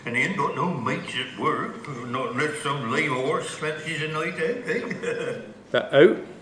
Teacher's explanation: the mouth diphthong sounds a bit more like the goat diphthong. So instead of being ow, it sounds like this.